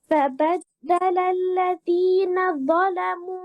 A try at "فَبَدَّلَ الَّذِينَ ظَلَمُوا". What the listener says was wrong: তোমার এখানে এই যে ফাবাদদালাল্লাযীনা শোনা যায় অর্থাৎ জালের রখাওয়াটা আসতেছে না জিহ্বাটা আরো বের করতে হবে উপরে যাতে আগায় জি فبدل الذين